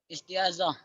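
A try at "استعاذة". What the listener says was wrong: Isti'adzah. Ya, pakai zal ya. Isti'adzah. Isti'adzah.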